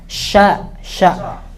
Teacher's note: Nggak boleh dia tebal, nggak boleh dia tertutup, harus terbuka. Sya, dia harus tipis ya, nggak boleh tebal. Sya, dan dia harus pecah di dalam ya udaranya. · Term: tafasyi